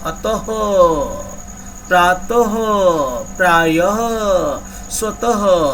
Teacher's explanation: अ के उच्चारण के बाद हम ह बोल रहे हैं। इस विसर्ग को आधा ह की तरह बोलते हैं।